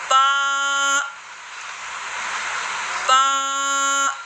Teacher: बा, बा, आपस में मिले, ठीक है। होठों के तरी वाले हिस्से जब आपस में मिले तो क्या अदा होता है, बा